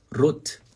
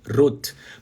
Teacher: Quando o R estiver no começo, antes de vogal. Você, ó, vibra a ponta da língua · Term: R do Faustão